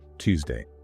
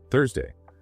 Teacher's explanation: Tongue inside, sharp release. Tuesday. Tongue outside, soft air. Thursday. I can physically feel the difference in my jaw.